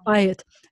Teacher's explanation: So the accent is on the buy.